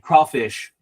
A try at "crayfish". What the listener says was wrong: Crayfish. There's no W in it. It's a crayfish. But that says crayfish. We call them crayfish up here, or crawdads up here too.